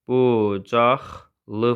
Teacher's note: K gə keçir, G X-yə keçir.